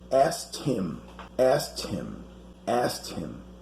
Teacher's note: the verb to ask in the past is pronounced ast like having a t in the end the k is not pronounced